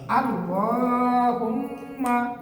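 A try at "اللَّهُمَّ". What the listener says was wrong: বেশি করে গুণনা করতে হবে, বেশি করে গুণনা করতে হবে, বেশি করে গুণনা করবেন।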